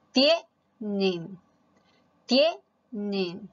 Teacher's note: Mayor fuerza de voz en tie, es decir, en la penúltima